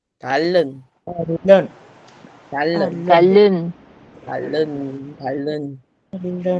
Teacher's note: Si se dan cuenta, la n cambió a L, entonces suena talón. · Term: lateralización